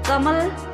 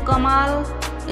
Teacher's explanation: कमल इसमें कोई मात्रा नहीं है, लेकिन कमाल इसमें म में आकार है, इसलिए म का उच्चारण जब हुआ इसका दुगना समय ज़्यादा लगा